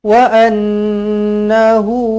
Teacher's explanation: hu di sini dibaca dengan dua harakat nampak ada wau kecil dekat selepas huruf ha baris depan ni